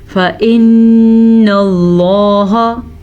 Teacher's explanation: لفظ اللہ کو موٹا پڑھنا ہے